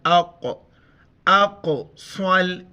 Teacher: حمزہ کو قاف کے ساتھ ملاتے ہوئے قلقلہ کریں گے، یعنی جھٹکے کے ساتھ پڑھیں گے · یعنی جھٹکے کے ساتھ پڑھیں گے، حمزہ قاف زبر اق، اقصل، اس کو صاد پڑھنا ہے، سین نہیں پڑھنا ہے، موٹا کر کے